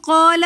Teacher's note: وَإِذْ قَالَ کے اندر قاف کے ساتھ الف مدہ آ رہا ہے، تو اس لیے ہم اس کو ایک الف کی مقدار کھینچ کر پڑھیں گے۔ وَإِذْ قَالَ رَبُّكَ میں را کے اوپر زبر ہے، تو اس لیے اس را کو ہم موٹا پڑھیں گے۔